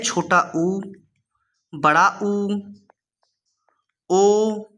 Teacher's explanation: एक होता है हमारा वृत्ताकार, मतलब उन स्वरों को बोलने में होठ की जो हमारी आकृति बनती है वो पूरा गोल बनती है